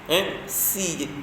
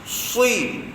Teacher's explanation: Baris bawah tapi kena muncung bibir. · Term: huruf sad